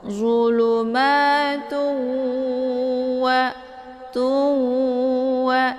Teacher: dileburkan suara tu ke dalam bunyi waw